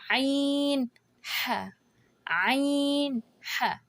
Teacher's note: عین ح، عین ح، ایک ہی جگہ سے نکل رہے ہیں، مڈ آف دی تھروٹ